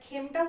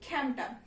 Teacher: খাঁটি বাংলা শব্দে এ ধ্বনির বিবৃত উচ্চারণ হয়